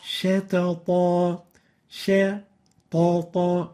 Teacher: we don't velarize the sheen, yet we velarize the two letters following it